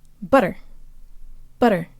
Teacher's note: The two T's in butter are actually very close to a flipped Russian R.